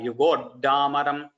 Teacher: that dakara should not become mahaprana. It is double alpa prana dakara.